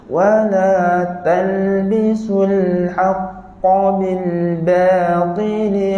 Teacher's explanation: Huruf ba kita tak nak terpengaruh dengan ketebalan huruf ta. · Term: Ba nipis